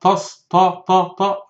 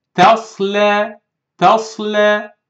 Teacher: the letter T is light, empty mouth letter, and the letter Sad heavy. Some readers said Tasla, Tas, Ta, Ta, Ta, wrong.